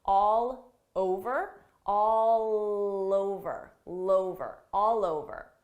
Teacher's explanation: notice how I can link those sounds together by extending that L sound to the next word because it's a vowel